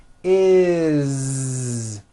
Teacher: It's never is, unvoiced, never. It's always is with a voiced Z.